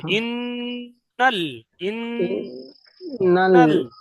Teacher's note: ইন্না টান হবে না, ইন্না ইন্না গুন্না হবে